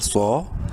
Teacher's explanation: सौद को बोल्ड करेंगे, एक अलिफ के बराबर लंबा भी करना है